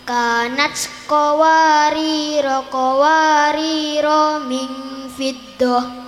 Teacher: Jika keduanya dibaca wasol, maka ro-nya dibaca pendek semua.